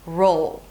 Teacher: Imagine like you have an 'aw' sound between the 'R' and the 'L' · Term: dark L